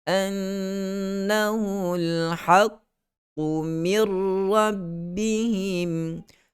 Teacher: Masukkan huruf mim ke dalam huruf ra terus. Nun dah diidghamkan masuk dalam ra. Tidak lagi kita kedengaran min.